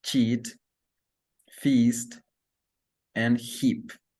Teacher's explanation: first vowel is Eve which area is front Tom position High lip shape spread and muscle tension tense